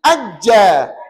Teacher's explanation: Jim ajja. tertahan tak tengah lidah tertahan pada langit-langit maka itu namanya ismat